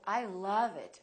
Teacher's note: make the uh really long